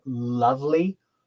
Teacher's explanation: L is when only the tip of the tongue is touching but the sides of the tongue are not touching at all the sounds are coming down the sides so those are um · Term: lateral approximate